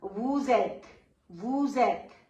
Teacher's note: So S will be joined with E, and that would become vous êtes.